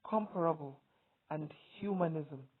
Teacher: where the stress falls on the first syllable